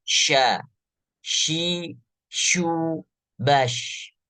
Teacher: lidahnya tidak berdekatan menempel langsung ke langit-langit atas, tetapi dia sedikit ada rongga di bagian lidah dan tidak bersentuhan langsung, tidak nempel ke bagian langit-langit atas, sehingga desis huruf shin keluar. · Ketika beliau berharokat kasroh, shin desisnya lebih besar.